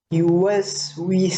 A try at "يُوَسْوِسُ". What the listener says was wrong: সুন্দর।